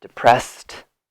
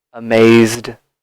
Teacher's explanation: T sound for no vibration, depressed. D for vibration, amazed.